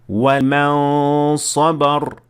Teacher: پہلی مثال ہے اخفاء کی، جس میں ہم دیکھتے ہیں کہ پہلے نون کو 2 حرکات تک پڑھا گیا، لیکن پورا نون نہیں، صرف آدھا یا صرف اس کا غنہ۔ اس کے بعد اگلا حرف ادا کیا گیا، یعنی نون موجود ہے لیکن نصف طور پر۔